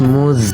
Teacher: زا میں سیٹی کی آواز آئے گی، یہ حروف صفیریہ میں سے ہے اور زا پر تشدید ہے، اسے ہم 2 مرتبہ پڑھیں گے۔